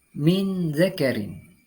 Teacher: dengan huruf dzal dalam kalimat tersebut terdapat hukum bacaan ikhfa Harfi cara membacanya Yakni dengan mendengungkan secara samar-samar selama dua ketukan